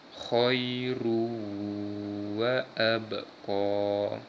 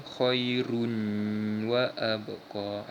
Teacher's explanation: Huruf waw tergolong di antara huruf-huruf idgham bi gunnah, maka cara bacaan dia memasukkan bunyi tanwin ini kepada huruf seterusnya iaitu huruf waw. Dengan kata lain, huruf tanwin dua di hadapan ni kita gantikan dengan baris hadapan saja dan kita masuk pada huruf waw.